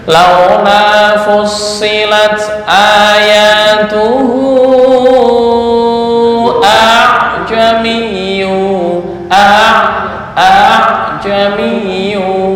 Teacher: Apa tashil? Membaca antara hamzah dan alif.